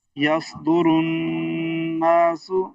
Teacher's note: یہ نون مشدد پہ غنہ ہوتا ہے